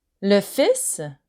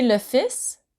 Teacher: you don't pronounce the L in fils